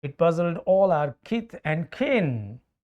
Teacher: Your tone, your voice should rise at the end of the sentence. This is called rising intonation.